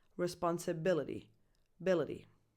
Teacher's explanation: depending on the speed it can sound more like a soft fast D